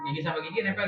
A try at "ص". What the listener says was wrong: Enggak. Gigi sama dia enggak. Enggak. Lidah pun enggak nempel ke gigi. Hadapan doang.